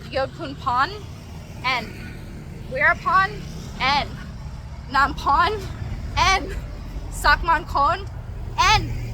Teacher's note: At the start it makes an L, at the end it makes an N.